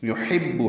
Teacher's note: یحب حا وسط حلق سے ادا کریں گے، یا اور با پر دونوں پر پیشے معروف طریقے سے پڑھیں گے.